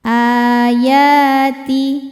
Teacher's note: mad tabi'inya mad tabi'i muqaddar karena ya berbaris fathah panjang, dibacanya panjang 2 harokat · A hukumnya mad badal karena ada hamzah dipanjangkan. Alif jika berharokat pada dasarnya ini pun adalah hamzah.